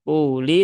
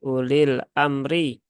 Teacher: Maka di sini ulil amri ya, u-nya tidak dibaca ya. U-nya tidak dibaca, sehingga ya menjadi pendek ya